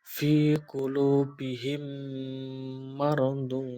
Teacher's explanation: memasukkan huruf mim ke dalam huruf Mim disertai dengan suara gunah sekitar dua ketukan atau harakat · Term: idom mutamilin